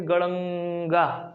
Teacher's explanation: प्लुत स्वर, जिसमें सबसे अधिक टाइम लगता है